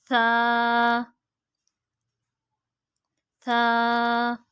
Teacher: जुबान का सिरा और ऊपर के दांतों के अंदरूनी किनारे से, यानी जो हमारा जुबान का सिरा है वो बिल्कुल अंदरूनी किनारे से, जो दांतों के अंदरूनी किनारे होंगे उनसे टच होगा।